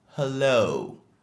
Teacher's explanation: La deuxième syllabe du mot est la plus accentuée.